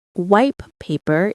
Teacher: The phrase white paper might be pronounced wipe paper in rapid speech as the T sound assimilates to the following P sound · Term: Assimilation